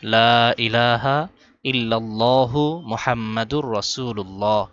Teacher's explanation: লা ইলাহা লাতে তিন আলিফ টান ইলা আলিফে এক আলিফ টান দিতে হবে